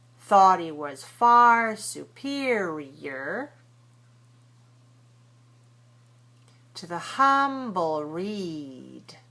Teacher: Don't pronounce the H. Make sure you make he and was very weak and short.